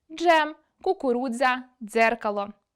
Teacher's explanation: Звуки [дж], [дз] вимовляємо злито, саме тому їх позначають у фонетичній транскрипції зі з’єднувальною дужечкою зверху: джем, кукурудза, дзеркало.